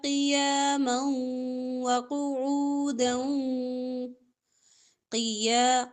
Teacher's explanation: قاف موٹا حروف مستعلیہ میں سے قیاما دو زبر کو واو کے ساتھ ملا کر ادغام کریں